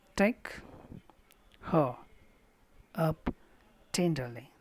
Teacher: Take is stressed, her is unstressed, up is unstressed. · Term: dactylic